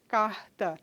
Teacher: Então, vejam só, quando a gente diz carta, né, aqui em Recife é assim que a gente pronuncia e no interior do estado também, carta. Esse rótico que sai aqui da glote, né, por influência desse tã que vem a seguir, nesse caso, que é desvozeado, ele sai também desvozeado. Então, carta é um som mais leve, não dá para a gente perceber tão fortemente a presença desse rótico aí.